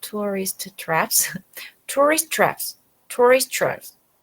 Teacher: you have two T's and they become one